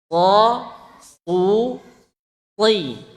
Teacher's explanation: Sementara sod ini dia tebal. Berarti dia pangkal lidahnya naik. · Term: huruf shad